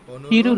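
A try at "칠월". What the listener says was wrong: চিরুয়াল রুল বলতে কিছু নাই রুল বা উল তো গ্রামার চিরুয়াল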